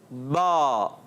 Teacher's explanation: با ادا ہوتا ہے دونوں ہونٹوں کے تر حصے سے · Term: حروف شفویہ